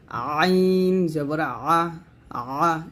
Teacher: এই আইন উচ্চারণটা আপনাকে হলকের মাঝখান থেকে নিয়ে আসতে হবে চাপ দিয়ে, আইন জবর আ, আ, এরকম।